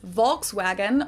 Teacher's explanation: Also, some speakers might pronounce the L, some might not. I would expect an English speaker to say this word with a close O, and probably not to pronounce the L by analogy with the word folk.